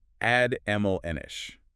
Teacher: 3 syllables. Stress on the second.